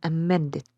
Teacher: the stressed syllable is men in amended